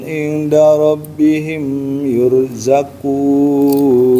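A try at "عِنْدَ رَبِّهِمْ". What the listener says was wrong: Ingnya itu ikhfa, dia harus agak ditahan. Inda rabbihim, ulang, bal ahya. Bal ahya'un inda rabbihim yurzaqun.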